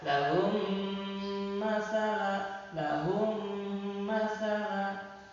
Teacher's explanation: ketika kita menahan, ya, suara di antara mim bertemu mim, itu suara agak masuk ke rongga hidung, jadi agak ngirung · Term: idgham mimi